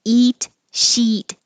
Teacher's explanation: remember sheet is e like eat and in the vowel diagram it's the highest position